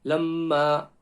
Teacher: Lamma ayn from the middle of the throat